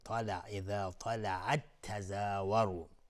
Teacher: طلعت، تا از حروف استعلاء غلیظ تلفظ میشه. تای ساکن بعدش تای متحرک اومده، ادغام متماثلین. میگیم طلع، اذا طلعت تزاوروا.